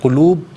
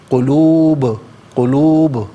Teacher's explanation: ساکن ہونے کی صورت میں یہاں پر قلقلہ یعنی آواز لوٹتی ہوئی محسوس ہونی چاہیے